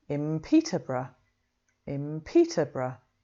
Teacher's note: So if we take another English city, Peterborough, you can make a good guess that what we actually say is in Peterborough, in Peterborough. Okay, it's just easier to move from a m sound to a b or p sound because of the lip shape than it is to make a n sound.